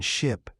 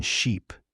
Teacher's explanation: the short i in ship versus long e in sheep